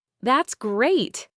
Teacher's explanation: with an excited falling tone full of genuine enthusiasm and joy